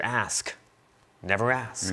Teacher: And then the kicker there, the sound that stands out at the end, breaks the alliterative pattern and shuts us down with that consonant cluster on a, that goes from a sibilant to a closure